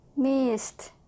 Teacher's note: S at the end made by the S sound. Air only, no voice. Ed sounds like t.